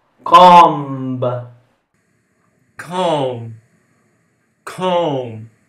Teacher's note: La B non si pronuncia alla fine